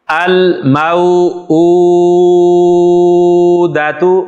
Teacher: میم کو اس لیے لمبا کیا ہے کہ میم کے بعد واو جو ہے وہ واو لین ہے